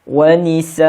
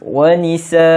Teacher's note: Bila hamzah ada tanwin, dia bersamaan dengan hamzah baris atas dan juga alif. Bacaannya panjang 2 harakat.